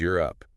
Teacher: Your tongue actually arches up to the roof of your mouth, almost like you're saying the word yes. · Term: glide